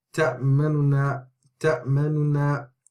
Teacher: Now, to incorporate the 2 noon into one. So when this word is read with al-ikhtilas, then the first dhamma is only read 2/3. 2/3 account of that first dhamma. · it's a very short first noon